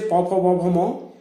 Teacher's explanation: এই 5টি বর্ণকে ওষ্ঠ বর্ণ বলা হয় কারণ এদের উচ্চারণকালে অধরের সঙ্গে ওষ্ঠের স্পর্শ হয়, সেই জন্য এদের নাম হচ্ছে উচ্চারণ স্থানগতভাবে ওষ্ঠ বর্ণ।